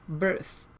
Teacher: The word birth finishes with a voiceless th sound.